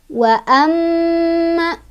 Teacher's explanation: cara bacanya didengungkan dan dengungan nya ditahan